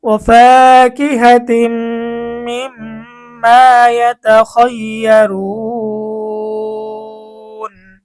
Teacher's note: পেশের পরে ওয়াও সাকিন মদের হরফ, মদের হরফের পরে আমরা ওয়াকফ করে দিছি মধ্যে আরজি ৩ আলিফ টেনে পড়তে হবে।